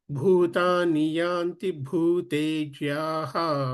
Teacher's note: Bhutani, Bha Mahaprana. Bhutejyaha, Bha Mahaprana again.